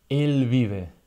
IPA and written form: el β̞iβ̞e (el vive)